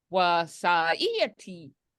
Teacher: high tone gives it kind of like a cheerful tone